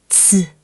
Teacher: This is the one English speakers always miss. It's not a k sound. It's like the ts in cats with a strong puff.